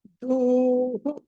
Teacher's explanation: ధ కి ధ మహాప్రాణం తర్వాత అలాగే దానికి దీర్ఘం కూడా ఉంది విసర్గం కూడా ఉంది ధూహు అని పలకాలి